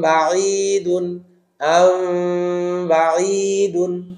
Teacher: হালকা করে ঠোঁটে ঠোঁট ধরবেন, হালকা, একেবারে শক্ত করেও না, আবার ফাঁকাও থাকবে না। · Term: ঠোঁটের ইকফা